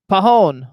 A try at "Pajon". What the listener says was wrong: the J is silent. Pajon.